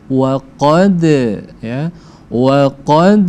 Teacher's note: Dal ketika dia sukun atau mati maka dia harus dipantulkan karena dia masuk ke dalam hukum qalqalah